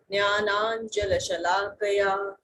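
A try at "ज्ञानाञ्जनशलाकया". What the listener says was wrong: Jnananjana. So it sounded like la. I was not too sure whether you pronounced it as la or na. It is Jnananjana Shalakaya. Nakara.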